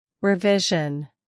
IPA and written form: rɪˈvɪʒən (revision)